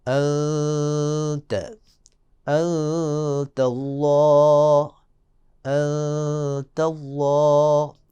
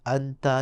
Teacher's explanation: نون کو چھپائیں گے لیکن غنے کے ساتھ چھپائیں گے، وہاں غنہ ہوگا ایک خاص قسم کا جس کو اخفا کا نام دیا جاتا ہے۔